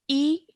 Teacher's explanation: don't stretch it because of the simple kasra